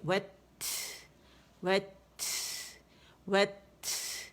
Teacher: وت آواز سختی سے رک گئی جب اس کے مخرج پہ گئے، اور اس کی شدہ کو ختم کرنے کے لیے ہم نے ہمس واضح کیا